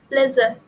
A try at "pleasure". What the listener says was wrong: pleasure. J again jahaz wala j. Pleasure हो रहा है, Z हो रहा है, Z नहीं चाहिए, J चाहिए.